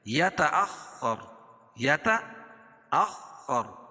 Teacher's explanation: اس کو سختی کے ساتھ پڑھیں گے، اور خا حروف مستعلیہ میں سے بھی ہے، اس کو موٹا بھی پڑھیں گے